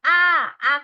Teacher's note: আ কি আপনি ঠোট গোল করে উচ্চারণ করতে পারবেন আ একদম প্রসারিত